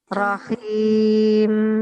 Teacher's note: Nah, mim terakhirnya ditahan satu ketuk ya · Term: mim mati